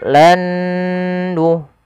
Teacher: huruf nun yang pertama dimasukkan kedua dan ditahan dengan gunnahnya sepanjang 2 harokat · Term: idgham bi gunnah